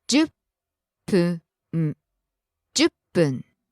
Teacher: Falls after the ju, stays low.